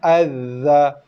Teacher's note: Sabdu pada zal tak dengung, tekan zal dan lepas azza.